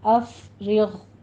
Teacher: را باریک پڑھی جائے گی اور غین کو آپ نے پر کر دینا ہے اور اس پر قلقلہ بھی نہیں کرنا